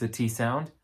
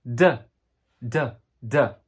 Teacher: T is a T sound. With a voice is D, D, D.